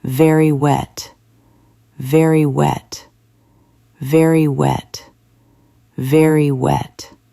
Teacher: He bites his lip for V. He makes a circle for W.